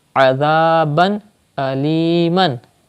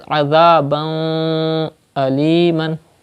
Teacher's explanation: You will not take the sound into your nose. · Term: Izhar